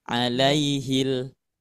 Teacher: Otomatis tidak dimasukkan ke huruf selanjutnya, tapi dijelaskan si alif lamnya. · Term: alif lam komariah